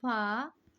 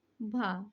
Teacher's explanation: घोष भी है महाप्राण भी है